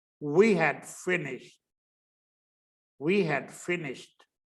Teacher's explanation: और केवल वीक शब्द अगर बोलना तो डी बोलेंगे, वी हैड फिनिश्ड, वी हैड फिनिश्ड। अब फिनिश्ड जो शब्द है उसमें ईडी लास्ट में आता है, लेकिन उच्चारण उसका टी होता है लास्ट में